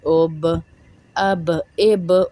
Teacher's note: حمزہ با زبر اب، آواز لوٹ کر واپس آئے گی کیونکہ حروف قلقلہ ہے با